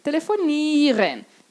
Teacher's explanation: Quando o I e o E se encontrarem, eu vou falar um I longo. Então, eu não vou falar IE, como a gente gostaria de falar em português.